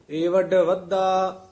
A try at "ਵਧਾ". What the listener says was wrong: ਹਾਂ, ਇਹ ਪਾਠ ਧਿਆਨ ਨਾਲ ਉਚਾਰਨ ਕਰਨਾ। ਵੱਧਾ ਨਹੀਂ ਕਹਿਣਾ, ਵਧਨ ਦਾ ਵਾਚਕ ਹੈ। ਪੂਲਾ ਹੀ ਉਚਾਰਨ ਕਰਨਾ।